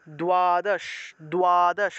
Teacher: তাহলে উচ্চারণটা কীরকম, মনে করেন যে দ্বাদশ আছে, দয়ের নিচে বফলা, দয়ের নিচে বফলা থাকলে প্রথমে দ উচ্চারণ হবে, তারপরে উ উচ্চারণ হবে, তারপরে অ উচ্চারণ হবে। তাহলে উচ্চারণটা হবে দ্বাদশ, দ্বাদশ, অর্থাৎ রস্যউটা উচ্চারণের জন্য আমরা দয়ের নিচে রস্য উকারটা দিয়ে দিলাম।